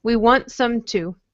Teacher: we make the T really soft. So, for example, we want some too. It doesn't sound like there's a T there at all.